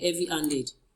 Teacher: We have our stress on heavy.